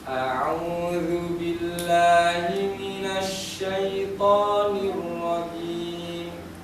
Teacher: Matobinya jangan terlalu panjang. Syaithanir rajim kepanjangan. Matobi itu 2 harokat, 2 ketukan.